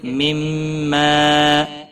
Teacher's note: میم مشدد پر گنہ ہوگا، ما الف مدہ بھی ہے، ایک الف کے برابر کھینچ کر پڑھیں گے